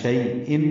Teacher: تنوین کے بعد عین آنے کی وجہ سے اظہار ہے، عین وسط حلق سے ادا ہوگا